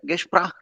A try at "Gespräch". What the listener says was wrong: No, Gespräch. Das Gespräch. A umlaut.